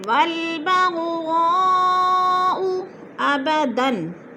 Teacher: چار الف مد ہے، اس کو چار حرکات کے برابر ہم نے لمبا کر کے پڑھنا ہے، جیسے والبغضاء ابداً، دو زبر تنوین آگے حروف حلقے میں سے حمزہ آ گیا ہے تو ادھر اظہار ہو رہا ہے، اخفا نہیں کریں گے۔ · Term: مد متصل